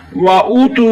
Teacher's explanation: वाव मद्दा हो रहा है, एक अलिफ की मुकदार खींच कर पढ़ना है